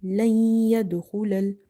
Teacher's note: After noon sakina there is letter ya which is from the Yarmalun letters, so we will do idgham ma'al ghunna. So we will do idgham, meaning we will merge the sounds as well as we will do ghunna here.